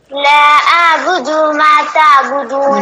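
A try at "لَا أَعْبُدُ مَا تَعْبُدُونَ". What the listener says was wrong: نہیں، اس سے پہلے صحیح پڑھ رہی تھی الگ الگ، جب ہم نے ملا کے پڑھا تو تھوڑا سا کھینچ رہی ہیں. نہ کھینچیں، دال کو نہ کھینچیں. دما تعبدون کہیں. دما تعبدون. لا اعبد ما تعبدون.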